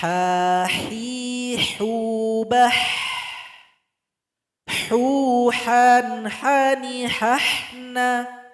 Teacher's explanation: Sifat dari huruf ha adalah hamas, ada angin atau nafas yang keluar. Kemudian ketika membacanya suara kita dialirkan saja atau rohwa. · Huruf ha tempat keluarnya berada di tengah tenggorokan. Kira-kira posisinya itu sama dengan tempat jakun laki-laki.